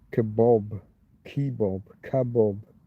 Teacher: North American heavily influenced by Persian and Armenian pronunciations which often turn the final a sound into an O